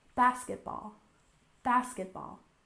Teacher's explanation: we stress the first syllable basketball